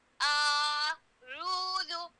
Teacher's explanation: حمزہ اور عین میں ہم نے فرق ڈالنا ہے. حمزہ بالکل نرم ہے, عین کو میں نے بھارا کرنا ہے.